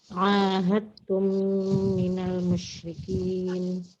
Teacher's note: Huruf tersukun diidghamkan ke dalam ta. Sebab terjadi hukum idgham mutajanisain, ini dibaca idgham kamil.